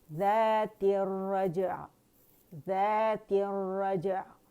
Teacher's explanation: عین کو توسط دینا ہے ہم نے، اسے جھٹکا نہیں دینا. عین کی آواز جو ہے تھوڑی سی چلے گی کیونکہ وہ بین بین لیٹر میں سے، لن عمر میں سے ہے اور اس میں توسط ہوتا ہے، درمیانی آواز چلتی ہے، ٹھیک ہے.